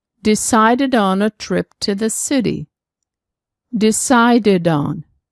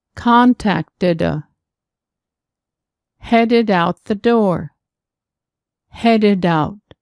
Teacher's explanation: Both T and D plus ED are pronounced did plus vowel sound. Pronounce the did but move only the second d in front of the next word.